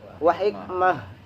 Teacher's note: Tapi karena kita nggak kuat di lafaz itu, maka kebetulan taknya itulah tak tamarbuh. Maka tak tamarbuh apabila diberhentikan maka menjadi ha. Jadi bukan wa hikmat tapi wa hikmah.